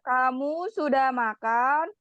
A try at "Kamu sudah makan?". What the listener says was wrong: malah jadi marah-marah kan kalau kayak gitu. Jadi satu kalimat bukan satu kalimat intonasinya dinaikin ya. Tapi bagian akhirnya doang gitu ya.